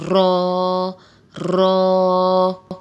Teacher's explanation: رو، رو، رو کے ساتھ آپ دیکھ رہے ہیں کہ الف لکھا ہوا ہے تو اسے ایک الف کے برابر ہی کھینچ کے پڑھیں گے، رو، رو۔ رو کو ادا کرتے ہوئے زبان میں کپکپاہٹ سی محسوس ہوتی ہے